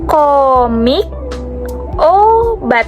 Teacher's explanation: Fonem O merupakan vokal sedang belakang, yang berarti saat kita mengucapkan O, itu bagian belakang lidah kita agak naik. Dan juga bibir kita sedikit membulat, tapi tidak sebulat atau sebundar U.